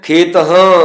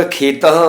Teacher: ਹਾ ਅੱਧਾ ਜਿਹਾ ਹਾ ਬੋਲਿਆ ਜਾਏਗਾ, ਖੇਤਾਂ ਮਾਣੋ ਇਸ ਤਰ੍ਹਾਂ ਬੋਲਿਆ ਜਾਏਗਾ ਜਿਵੇਂ ਹਾ ਲੱਗਾ ਹੀ ਨਹੀਂ ਹੈ